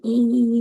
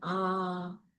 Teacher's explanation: And then we're going to talk about whether the sound is made with a tense tongue or lax. So again, E is tense and ah is lax.